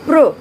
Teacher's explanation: यहाँ पर प की ध्वनि आधी है और र की ध्वनि पूरी है।